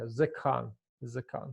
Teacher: So the first vowel, kametz, is supposed to be reduced to shiva. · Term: construct form